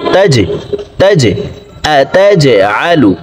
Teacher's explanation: জিম কলকলার হরফ নিচের দিকে ধাবিত করে ধাক্কা দিয়ে উচ্চারণ করতে হবে তা জিম জবর তাজে তাজে আতাজআলু قالوا أتجعل فيها من يفسد